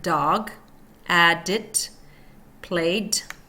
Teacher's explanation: Tongue tip is touching ridge behind teeth, stops airflow and releases it through mouth.